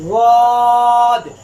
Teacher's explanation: واد ادا ہوتا ہے زبان کی کروٹ اور اوپر والی دانتوں کی جڑ سے۔